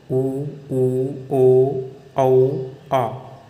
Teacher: तो वृत्ताकार स्वर, इनके उच्चारण में होठों का आकार गोल हो जाता है